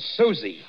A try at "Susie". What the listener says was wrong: Susie, you make it so it rhymes with floozy.